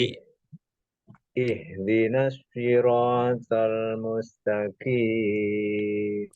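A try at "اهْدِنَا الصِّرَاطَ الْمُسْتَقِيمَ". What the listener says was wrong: Oke, tidak masuk ke huruf shin, tetapi huruf sodnya tinggal ditebalkan ya. Dilatih sli. Sli, sli, sli. Sli. Pangkal lidahnya dinaikkan. Pangkal lidah dinaikkan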